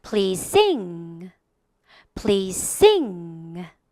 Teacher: S와 Z도 역시 유사 발음이므로 우리가 please sing 이러지 않고 한 번에 please sing 하고 앞쪽 발음에 살짝 죽여 들어가겠습니다.